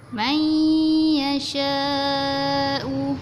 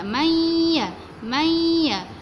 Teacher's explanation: Macam huruf nun ni tak jelas bunyi dia. Dia terus pergi kepada huruf ya. May ya. Tengah-tengah lidah kita mesti kena lelangit. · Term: nun mati berjumpa dengan huruf ya